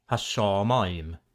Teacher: it adds that dot we saw before, called a dagesh, to the following consonant, wherever possible, which causes gemination. In other words, it doubles the consonant.